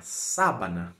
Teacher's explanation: a palavra sabana primeiro que a sílaba tônica é a primeira